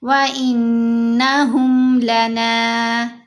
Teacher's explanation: نون کے اوپر زبر، آگے الف، الف حرف مدہ ہے تو نون کو ہم نے 2 حرکات کی مقدار لمبا کرنا ہے